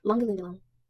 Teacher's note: But the double A in Lindelaan is an open A.